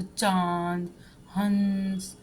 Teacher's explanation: अनुनासिक होते हैं जिनका उच्चारण नाक और मुंह दोनों से होता है।